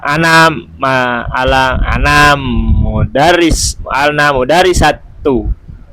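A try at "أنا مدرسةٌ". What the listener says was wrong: Enggak, antum perjelas, antum tanwin apa enggak? Iya, kenapa enggak ditanwin tadi? Oh, ditanwin tadi. Oh, enggak ditanwin tadi. Antum kenapa enggak ditanwin? Enggak jelas ya antum ngomongnya. Enggak, kenapa antum enggak ditanwin? Kan bukan nasafi, mudhaf juga bukan.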